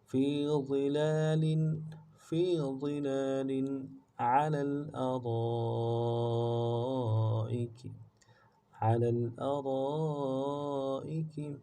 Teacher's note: عین کو موٹا ادا کرنا ہے، لام کو اگلے لام کے ساتھ ملانا ہے · را کے بعد الف مدہ ہے، مد عارض ہے